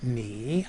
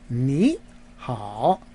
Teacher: when you put two third tones together in Mandarin in the pronunciation the first of the two tones becomes a second tone a rising tone so you don't say me you say me ha right the